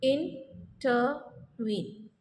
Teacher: The first two are unstressed syllable, whereas the last syllable is stressed. Such type of feet is called anapest.